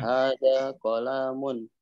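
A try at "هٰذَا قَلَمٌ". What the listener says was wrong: Nah, lahnya mesti terlalu panjang. Qalamun.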